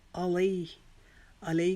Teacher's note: علی کو ہم نے ایک الف کے جتنا لمبا کرنا ہے